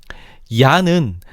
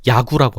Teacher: 야는 반모음 이와 단모음 아가 결합해서 만들어진 이중모음이야. 어떤 친구들은 야가 단모음 이와 단모음 아가 결합한 걸로 알고 있는데 잘못 알고 있는 거야. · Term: 이중모음 야